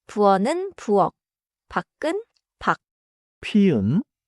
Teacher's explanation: 키읔 and 쌍기역 become a 기역 sound at the end: 부엌은 [부억], 밖은 [박].